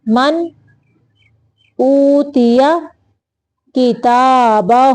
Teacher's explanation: الٹا پیش ہو کو لمبا کرنا ہوتا ہے تھوڑی دیر تک